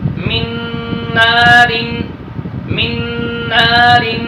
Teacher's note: جو نون کا نون میں ادغام ہوا ہے وہ بھی ادغام مع الغنہ